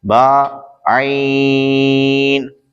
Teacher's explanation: बा दोनों होठों के तर हिस्से से अदा होता है। आइन हल्क के दरमियान से अदा होता है।